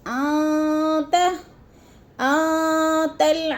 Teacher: آتل، ان میں اخفا ہے، نون ساکن کے بعد تا آ گیا ہے تو ادھر اخفا کریں گے، آواز کو ناک میں چھپا کر پڑھیں گے